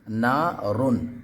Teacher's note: نارن گنہ بھی نہیں کرنا ہے، بلکہ اس کو ظاہر کر کے پڑھیں گے، اظہار کریں گے، نارن۔ ٹھیک ہے، نون الف زبر نا، را دو پیش رن، نارن۔